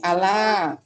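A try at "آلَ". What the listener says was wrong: Alah, panjang.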